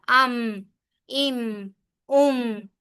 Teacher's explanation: ام کرتے ہوئے ہلکی سی آپ کو ایک ہلکی سی جنبش سی ہلکی سی گدگدی سی آپ کے ناک میں بھی فیل ہوتی ہے، ام، ام، ام، ٹھیک ہے؟